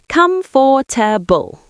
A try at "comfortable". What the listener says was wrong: That's the mistake. You're saying every syllable. KUMF-ter-bul. Native speakers usually say comfortable. We squish it together. comfortable. Yes, we don't say KUMF-ter-bul with clear syllables. We say comfortable, like one quick word.